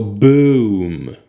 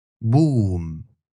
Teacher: Arabic will consistently use just one pure oo.